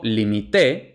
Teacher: veremos no lleva tilde Y por último limité pretérito indefinido o pretérito perfecto simple lleva acento en la última sílaba